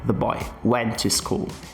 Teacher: Percebe que esse artigo definido the, ele é quase que oculto, ele é quase que retirado aqui da frase the boy. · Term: sílaba átona